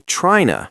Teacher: he reduces the preposition to until it almost sounds like a duh or nuh. He'll say tryna instead of trying to, and he drops the H on pronouns. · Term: reductions